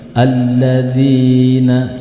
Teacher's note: jika ketemu dengan huruf lam yang bertasjid, sedikit disentak. Alladzina, bukan alladzina, bukan, tetapi alladzina.